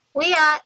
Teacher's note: the glottal stop, that's where the air gets cut off halfway through the E of we